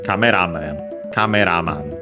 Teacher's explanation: it's accented by the way on the ra in this case, so it's treated like compounds in Japanese, as we have seen more often.